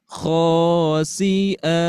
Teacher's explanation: Jadi berhenti terlebih dahulu di khasi'a, dan khasi'a ini masuk ke nada ke-6. Jadi naik.